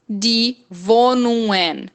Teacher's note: O G no final, depois, o G depois de N eu não falo